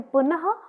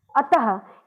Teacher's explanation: विसर्ग में 2 बिंदियां क्रमशः एक दूसरे के ऊपर रखी होती हैं और इनका प्रयोग तत्सम शब्दों के रूप में संस्कृत में किया जाता है और इनका उच्चारण ह की तरह ही होता है